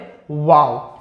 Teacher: दोनों होठों की गोलाई से अदा होता है वाव